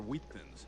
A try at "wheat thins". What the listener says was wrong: Why are you putting so much emphasis on the H?